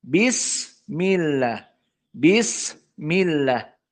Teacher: suara dari sin yang mendesis masih terasa